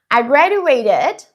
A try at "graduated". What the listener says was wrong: We need to change two sounds. Use the a sound like black cat, gra. And the d changes to a j sound, like juice and jump. So we say graduated.